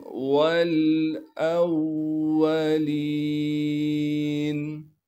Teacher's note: اسی طریقے سے واو کو آگے لام ساکن سے ملانا ہے، واو کے بعد الف موجود ہے، اسے ہم نہیں پڑھیں گے، لام کے بعد حمزہ ہے، حمزہ کو آگے واو مشدد سے ملا دیں گے، واو پر تشدید ہونے کی وجہ سے تھوڑا سا ٹھہراؤ رکھیں گے، لام کے بعد یا مدہ ہونے کی وجہ سے لام کو ایک الف کے مقدار کھینچیں گے، نون کو وقف کی حالت میں ساکن کر دیں گے۔